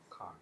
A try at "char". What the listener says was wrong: Char. Char, I don't, it's not a car. You drive a car, that's a char, it's got an H in it.